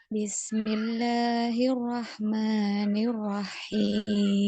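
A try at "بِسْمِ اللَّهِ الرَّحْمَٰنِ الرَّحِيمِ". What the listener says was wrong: Nah, dinaikkan ya, di ro ini ada tasydid, naikkan. Suaranya naik. Bismillahirrahmanirrahim. Gitu ya. Naik. Bismillahirrahmanirrahim.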